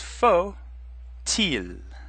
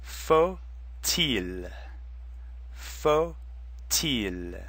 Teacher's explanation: You can use inversion, which means you switch the 2 words. But because faut now comes before il, the T sound is going to turn on because il starts with the vowel. So it would be pronounced faut-il.